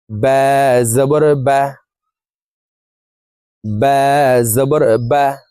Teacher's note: টেনে পড়া যাবে না। দ্রুতভাবে তাড়াতাড়ি করে পড়বো।